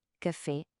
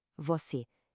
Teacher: comparar o E aberto de café contra o E fechado de você